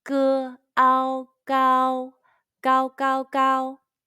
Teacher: Let's combine the initial 歌, the final ao, and the first high-pitched tone all together.